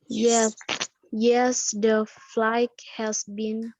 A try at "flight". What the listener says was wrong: Bukan flight, tapi flight. Huruf G-nya nggak dibaca. Huruf G-nya nggak dibaca ya.